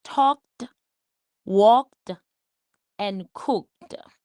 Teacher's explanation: So it sounds like the sound of ed has a T sound in it.